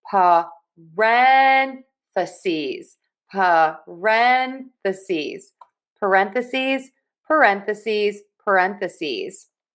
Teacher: So, we are going to stress syllable number two. Also, that S on the end really confuses some people. We are going to pronounce that with a Z sound. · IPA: /pəˈrɛn.θə.siːz/